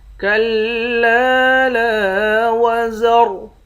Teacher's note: لام کے بعد الف ہے، ایک الف کی مقدار کھینچیں گے